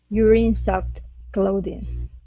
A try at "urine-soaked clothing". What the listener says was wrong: Okay, now instead of sucked, it's soaked. Urine-soaked clothing.